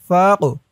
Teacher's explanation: রিকাতু ওয়াসারিকু ওয়াসারিকাতু والسارق والسارقة فاقطعوا ফা দিয়ে কফ ধরবে ফাক এই কফটা কলকলার হরফ ধাক্কা দিয়ে পড়তে হবে